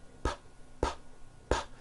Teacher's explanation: your vocal cords are not producing a sound so therefore the P sound is what we call unvoiced